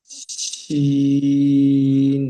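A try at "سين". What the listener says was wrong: সিটির মতন আওয়াজ বার করেন, সিন।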